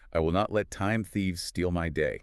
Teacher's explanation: Pay attention to the th sound in thieves. Put your tongue between your teeth.